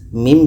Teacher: mim mati bertemu a maka ini izhar syafawi tidak boleh dengung harus dibaca jelas